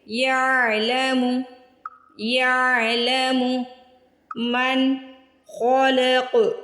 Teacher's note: خو اور قاف کو موٹا پڑھنا ہے